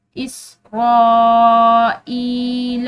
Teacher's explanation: یہ الف پر بڑی مد ہے، تو اس را کو بھی ہم نے لمبا کھینچتے ہوئے پڑھنا ہے